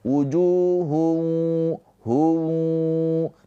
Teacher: tanwin ini dileburkan, dimasukkan ke huruf wau, ditahan dua harakat sambil dengung. Maka tanwin ini enggak dibaca lagi ya, tapi hanya domahnya aja. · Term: idgham bighunah